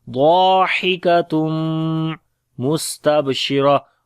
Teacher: On the sin we make hams and whistling quality, and then ta on the ba we make qalqala. · After the tanween there is mim, we make idgham with gunna.